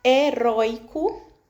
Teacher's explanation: nessa palavra heróico, eu tenho a sílaba penúltima roi como mais forte. E tem aí esse de tongo aberto.